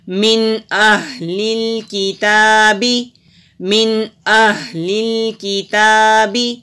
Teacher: ہاں حروف حلقی ہے، حلق سے نکالیں گے، تا کے اوپر کھڑی زبر ہے، ایک الف کے برابر لمبا کریں گے